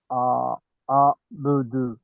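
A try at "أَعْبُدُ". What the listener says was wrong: ఆబుదు. మీరు చదివేటప్పుడు ఆబిదు అంటున్నారు, తప్పు కదా అది.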